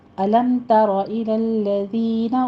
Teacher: तारा में रॉ मुफ़ख़म पड़ी जाएगी